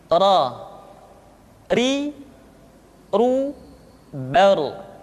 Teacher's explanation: Berikutnya adalah huruf ra, diucapkan dengan menyentuhkan punggung lidah dengan langit-langit.